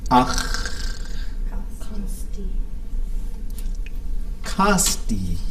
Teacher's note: So the T changes to a D. Then we have a low tone I because the tone before it is high.